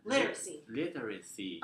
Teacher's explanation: in this word literacy, you need to pronounce it with a stress on the first syllable